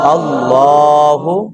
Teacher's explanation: لفظ اللہ جو ہے اس کو ہمیشہ موٹا کر کے پڑھنا ہے